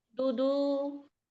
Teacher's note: Dalnya di belakang gigi seri ya. di atas ya.